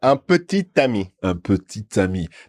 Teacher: we do sound the T before the ami because of the liaison rule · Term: T sound